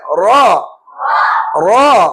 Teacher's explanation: அடி நாக்க தூக்கணும் வாய நிறைச்சு சொல்லணும் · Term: வல்லினம்